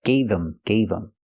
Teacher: The H in him is silent because the word's not stressed.